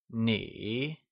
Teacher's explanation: It is said with a falling rising tone also known as the third tone